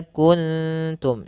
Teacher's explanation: tidak dibaca dengan ng, tapi dia kuntum, disamarkan langsung ke huruf ta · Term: ikhfa